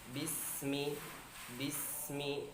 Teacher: Huruf sin ini bergeser ya. Masuk kepada rokhawah atau hamas. Jadi enggak boleh kita baca bismillah, bismillah, tapi kita geser bismi, bismi.